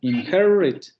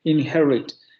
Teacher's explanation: Aquí el asunto del fonema vibrante, efectivamente, así es como se tendría que dividir, porque en este caso estamos ante una vocal rótica y por tanto esa vibración iría con la vocal